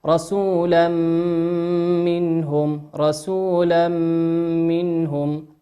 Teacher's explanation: الآن معنا تنوين أتى بعده حرف الميم، والميم من حروف الإدغام بغنة يغن بمقدار حركتين